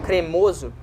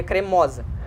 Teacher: em o, com a vogal de timbre fechado, por exemplo, cremoso, no feminino o timbre vai ser aberto